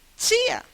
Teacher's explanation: Agora, esse ditongo é um ditongo crescente. Porque primeiro vem uma semivogal, na mesma sílaba, uma vogal, o movimento é crescente.